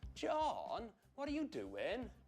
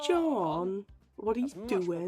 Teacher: That huge glide on John. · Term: South Wales accent